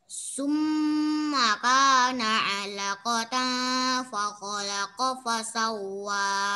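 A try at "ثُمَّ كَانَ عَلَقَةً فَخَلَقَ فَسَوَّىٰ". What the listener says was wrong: Cuma agak dilamakan, agak ditahan lagi nak. Pada dengung ayat 38 nih dengungnya agak ditahan lagi. Summa kana alaqatan faqalaqa fasawwa. Cuma ini saja sedikit masukan tadi pada ayat 38. Ala kotang itu agak didengungkan dikit lagi.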